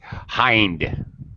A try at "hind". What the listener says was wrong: Long I. But yeah, right word.